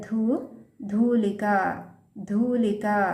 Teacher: ಧೂಲಿಕ ಮುಂದೆ ಒಂದು ಲೈನ್ ಇಲ್ಲಿ ಮಹಾಪ್ರಾಣ ಧೂ